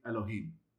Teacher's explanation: Why is it so short in that first vowel? Because of the schwa. It just shortens the pronunciation when it's at the beginning of a word.